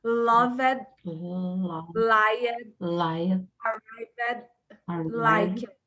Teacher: O D, ele morre aqui com os dentes na língua.